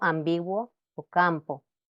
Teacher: el fonema consonántico nasal que trabaja con la nariz y bilabial porque es la m